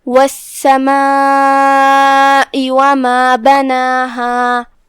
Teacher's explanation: مد واجب متصل کا معنی ہے کہ حرف المد اور اس کی وجہ دونوں ایک ہی کلمہ میں آئیں، لہذا ہم اپنی آواز 4 مد کے برابر لمبی کریں گے · کلمت السماء میں یہاں جو کہ سین ہے اور اس پہ تشدید ہے، لہذا دھیان رہے ہم سین کو 2 حرف کی مقدار میں ادا کریں گے. یہاں مد واجب متصل ہے.